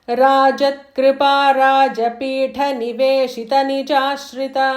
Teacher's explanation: So Rajapitha, that tha is Mahaprana.